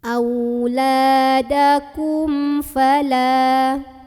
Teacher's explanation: Di sini ada idhar syafawi karena ada mim sukun yang ketemu sama huruf selain mim dan ba. Maka mim sukunnya ini dibaca jelas, bunyi tidak perlu ditahan.